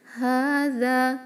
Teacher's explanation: ہا کو 2 کاؤنٹ، دال کو 2 کاؤنٹ · دال میں نو بزنگ ساؤنڈ